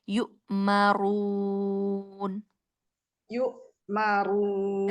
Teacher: Hamzanya tabrak, ronya tafkhim